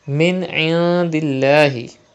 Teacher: you can see zir before the lam of Allah's name, so you have to pronounce it with thin voice